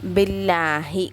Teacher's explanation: அல்லாஹ் என்ற லாமுக்கு முன்னாடி எழுத்து ஜேர் பெற்று வந்திருக்கனால அதை நம்ம எப்படி ஓதணும்? மெல்லினமாக சாதாரணமாக உச்சரித்தா போதும்